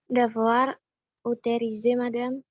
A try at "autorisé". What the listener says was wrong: Jadi di OT itu O bukan E. O. O. Auto. O. Autorisé.